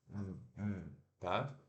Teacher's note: ele é vozeado então para fazer esse som a gente coloca a língua na ponta dos dentes ó e vai sair o som E você tem que vibrar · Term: th